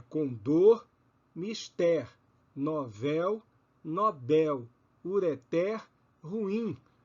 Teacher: Trata-se de palavras oxítonas, porque a sílaba tônica é a última em cada uma delas.